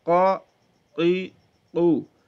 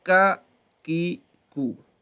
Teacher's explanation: ایک تو مخرج کا فرق ہے, دوسرا یہ کہ قا یہ تھوڑا سا موٹا پڑا جائے گا, قا قی قو. دوسرا ہوگا کا کی کو, ٹھیک ہے.